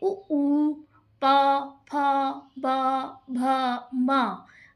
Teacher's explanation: ओष्ठ। ओष्ठ का मतलब होता है होठ। हमारे होठों को स्पर्श करने वाले वर्ण। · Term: ओष्ठ वर्णा